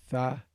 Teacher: If you take the ta and you put the tongue forward, you get tha